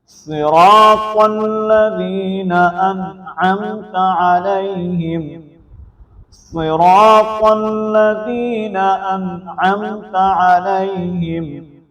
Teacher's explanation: الذین کے اندر یا ساکن ما قبل زیر ہے تو یا مدہ ہے اس لیے اس کو پر کر کے لمبا کر کے پڑھیں گے، ایک الف کے مطابق کھینچ کر پڑھیں گے. اور انعمت، یہاں پر نون کے اوپر ہم غنہ نہیں کریں گے، یہاں پر اظہار کریں گے کیونکہ نون ساکن کے بعد عین آ گیا حروف حلقی میں سے، اس لیے یہاں پر اظہار ہوگا تو ہم اظہار کریں گے، واضح کریں گے.